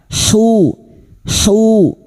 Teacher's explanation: Hu wastul halqi atau tengah tenggorokan